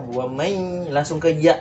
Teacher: Ada nun bertemu dengan ya, jadinya dia macam hilang ya nunnya itu. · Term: idgham bigunnah